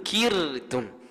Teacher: Kalau boleh cuba cek bacaan kita baiki nah supaya ra tu jadi nipis.